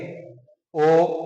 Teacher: जो होठ होते हैं वो गोलाकार आकृति में आ जाते हैं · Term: वृत्ताकार स्वर